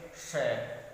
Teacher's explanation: ऊपर मूर्धा की तरफ जीभ ले जा करके, वैसे हम बोलेंगे श, तो मोटी आवाज आएगी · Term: मूर्धन्य